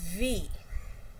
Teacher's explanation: It's labiodental fricative because the two tooth touches the lower lip. The upper teeth is touching the lower lip, so it is called voiced labiodental fricative.